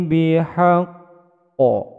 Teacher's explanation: Karena berharokat tasdid maka ditekan terlebih dahulu baru kemudian memantul menjadi bacaan qalqalah kubro karena huruf qaf di ujung bacaan